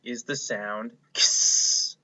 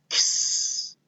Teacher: This sound is the K sound and the S sound smashed together. So it's kind of like two sounds in one.